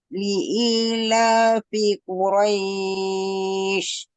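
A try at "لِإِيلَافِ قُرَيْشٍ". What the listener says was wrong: Sudah bagus, tinggal pada Quraisy, jangan buru-buru. Jadi selesaikan masing-masing haknya yang huruf qaf dan ro-nya. Li'ilafi Quraisy.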